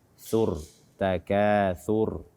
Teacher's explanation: tha ini keluarnya dari ujung lidah bersentuhan dengan ujung gigi seri atas. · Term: huruf tha